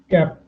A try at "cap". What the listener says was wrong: Cap नाही. Cap. Cap. थोडीशी air blow out झाली पाहिजे when you're speaking that. Cap.